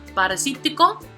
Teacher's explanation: which is 5 syllables, so the prosodic accent is going to fall on the 3rd syllable